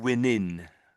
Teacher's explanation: the NG sound was missing a bit on the end